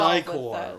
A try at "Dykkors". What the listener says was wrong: That sounds like decor. Yes.